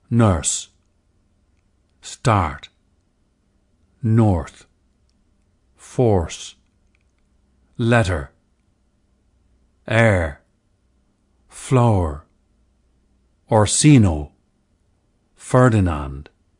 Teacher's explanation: early modern English, EME, was a rhotic dialect, with heavy R coloration of vowels that are followed by R. The silent R of today's received pronunciation, Standard British English, is a more recent development.